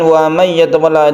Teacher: Kemudian wa may yatawalla ada idgham bi gunnah, karena nun mati bertemu dengan ya, dibaca bi guna artinya dengan dengung